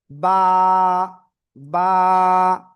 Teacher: দুই ঠোঁটের ভিতরের অংশ বা ভিজা অংশ থেকে আমরা উচ্চারণ করব।